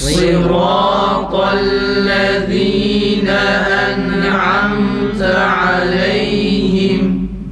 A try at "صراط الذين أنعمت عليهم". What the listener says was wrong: Tekrar mimi fazla sıkmayalım. Seri bir şekilde geçelim.